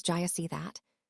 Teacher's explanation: The auxiliary verb did and pronoun you merge into one sound.